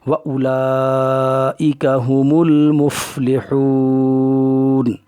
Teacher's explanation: آگے آیت ہے تو اس لیے ساکن کریں گے، نون زبر نہ سے ساکن کر دیں گے، یعنی جزم والی علامت کی طرح پڑھیں گے۔